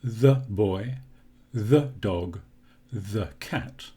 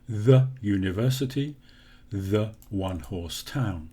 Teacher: when the word the is followed by a consonant sound we use the schwa sound